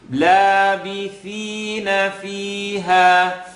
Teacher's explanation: So an E sound. Labith, tip of the tongue, edge of the top teeth